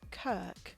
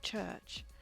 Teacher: Somehow, over the years, the K pronunciation of ch turned into the ch sound we say now.